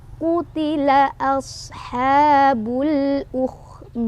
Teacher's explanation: Qutila sodnya punya sifat hamas, ada angin keluar. Sofir ada desisan ya, seperti suara hewan, seperti suara angsa.